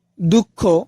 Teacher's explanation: দুঃখ বানানে কিন্তু বিসর্গের কোন উচ্চারণ হচ্ছে না